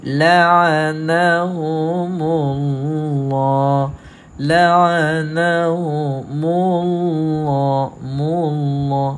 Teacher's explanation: dammah maka bacaannya begini laanahumullah laanahumullahullah Nampak tak baca dengan tebal bukan saja baca tebal dan kita juga kena baca panjang sekurang-kurangnya dua harakat · baca dengan tebal sebab sebelum kalimah Allah terdapat huruf yang berbaris dammah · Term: laf Zul jalalah